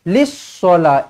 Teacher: Daripada lam baris bawah, terus masuk ke dalam huruf sad sabdu.